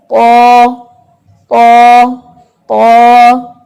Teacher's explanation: قا king letter ہے, بہت ہی heavy letter ہے, اس میں بھی زبان اٹھائی جاتی ہے